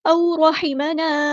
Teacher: वाव लीन आ गई है तो नरमी से मोड़ेंगे